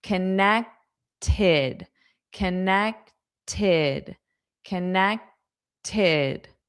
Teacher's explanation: It's because the ED is pronounced as id, id. But then because we have that T, it'll be tid, tid.